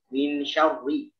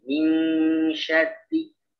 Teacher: Jadi kalau ini untuk lafaz ini syarri karena rohnya dua-duanya dia berharokat kasroh, maka dibaca tipis ya, jangan min syarri, jangan tebal.